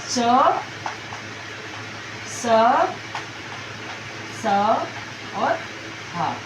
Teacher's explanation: इनको बोलने में अधिक प्राणवायु की आवश्यकता होती है। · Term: महाप्राण